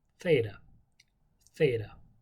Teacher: Actually, in Greek, technically, if you want to do it right, you would take the back of the tip of your tongue against the back of your teeth